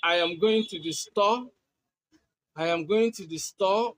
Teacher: With a rising tone, you are indicating uncertainty. You are really not sure.